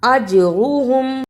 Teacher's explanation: جیم پر جزم کی صورت پہ قلقلہ کرنا ہے، اج را کو پر پڑھنا اور ہم کو جلدی پڑھنا